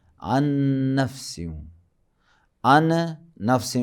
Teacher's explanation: عن نفس، عن نفس یا عن نفسن یا عن نفسیوں، عن نون ہے اور بعد میں نفس کا بھی نون بھی جو ہے وہاں بھی نون ہے، 2 نون ایک جگہ میں جمع ہو گئے تو پہلے والے نون کو ساکن کر کے بعد والے میں ادغام کریں گے